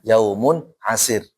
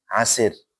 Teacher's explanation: Nah, yaumun asir. Nah, ra sukun sebelumnya kasrah dibaca tarqiq.